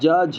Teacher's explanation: ज झ अगर बोल रहे हैं तो हमारी जवान जो है तालू से आपकी लड़ रही है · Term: तालू व्यंजन